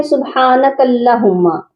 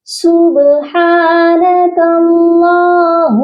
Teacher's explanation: اللہ کے لام کے اوپر کھڑی زبر ہے، اس کو ایک الف کے برابر لمبا کر کے پڑھنا ہے اور اس کو موٹا بھی کر کے پڑھنا ہے